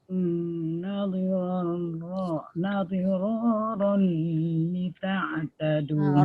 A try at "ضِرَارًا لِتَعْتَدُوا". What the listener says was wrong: Roll tu dah betul masuk lam, tapi jangan lama. Dirarul li ta'tadu. Nadira. Jangan waz. Hujung lidah keluarkan.